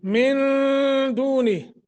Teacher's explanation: نون ساکن کے بعد دال ہے اخفا کریں گے